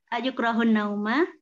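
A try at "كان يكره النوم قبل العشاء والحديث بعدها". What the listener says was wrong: Kana. Kana. Yuk harusnya kana yakrohun nauma atau yakrohu an nauma. Kana yakrohun nauma. Hanya kurang sama tadi harusnya yak menjadi yuk.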